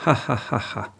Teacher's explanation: nimamo pa faringalnega, ki je h, kot ga imajo recimo Nemci